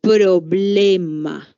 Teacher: bilabiales es decir que se pronuncian haciendo que los dos labios se toquen · cuando pronunciamos la p los labios se juntan